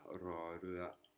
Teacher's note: On peut aussi faire rouler le R. รอเรือ Donc c'est l'équivalent du R roulé.